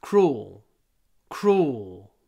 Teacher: you get to the l sound at the end cruel cruel in fact the L we almost don't pronounce it cruel cruel lots of w not so much l cruel now